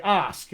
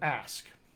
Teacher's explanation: it's got some British features, for instance, the trap bath split happens. So they say ask instead of ask.